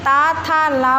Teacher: दांत से ता था ला बोला जाता है।